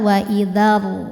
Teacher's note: Wa idzar rusulu, huruf ra dibunyikan secara tafkhim karena harokatnya dhammah. Cara membacanya tebal, pangkal lidah naik. Jadi pas mau pindah juga udah tebal.